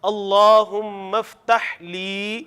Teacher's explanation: اگر لام زیر لی ہوتا نا اکیلا، پھر ہم نے اس کو پڑھنا تھا اللہم افتح لی ابوابا. اب ہے لام زیر یا لی، تو اس کو تھوڑا سا لمبا کرنا ہے